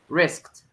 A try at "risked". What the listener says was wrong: With a final T. Risked.